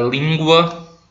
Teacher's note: ele sai pelas laterais da boca tá por isso chamado lateral